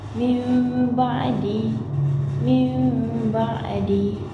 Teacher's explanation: cara membacanya iaitu dengan mendengungkan dan merapatkan kedua-dua bibir · Iqlab bermaksud menukar atau mengganti sebutan nun sakinah kepada mim beserta dengung